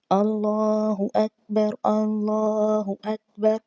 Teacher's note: اللہ اکبر، اللہ کے نام کو موٹا پڑھا جائے گا یعنی کہ پر پڑھا جائے گا، اور اکبر با پر ہم قلقلہ نہیں کریں گے کیونکہ آلریڈی اس کے اوپر زبر آ چکی ہے